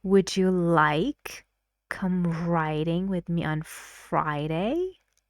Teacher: the speaker gives more stress to like